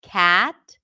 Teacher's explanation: the cat sound has more of a smile in it because we pull the lips to the sides.